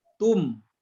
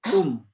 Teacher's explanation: Bacanya tidak didengungkan, tapi hanya dijelaskan saja mim sukunnya. Jadi tum, ya, bibir kita terkatup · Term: izhar safawi